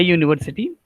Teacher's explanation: YU. U sound is a YU sound. So it is consonant.